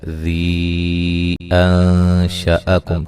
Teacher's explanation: قل، قاف کو موٹا ادا کرنا ہے، هو الذي، ذال کو نرم ادا کرنا ہے، اور اس کے بعد مد ہے، مد جائز ہے، ذی انشأکم، ٹھیک ہے، یہ مد جائز ہے۔ اور یہاں نون ساکن کا اخفا ہے باریک